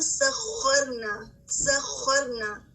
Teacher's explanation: خا پر تشدید ہے اور اس میں 2 بار خا کو ادا کرنا ہے